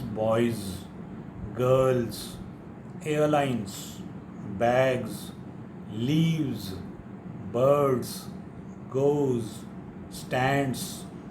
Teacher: it will sound as z after a voiced vowel or a consonant other than z, j and j.